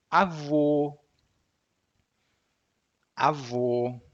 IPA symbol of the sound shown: o